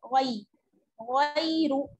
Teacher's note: या साकिन है और या साकिन से पहले जबर की हरकत है, ये क्या हो जाएगी याइलीन, यानी इसे खींचना नहीं है